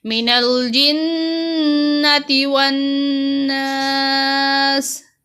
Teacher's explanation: نون پر غنہ کیا گیا جنتی اور والناس شد کی وجہ سے، اور نون کو لمبا نہیں کرنا، جنتی والے اور ناس والے کو لمبا کرنا ہے کیونکہ اس کے ساتھ الف ہے.